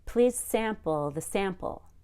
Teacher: they were both stressed on the first syllable · the word sample doesn't change whether it's a noun or a verb you always stress the first syllable